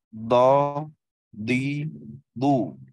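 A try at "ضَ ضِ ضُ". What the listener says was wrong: Boy, lebih tebal.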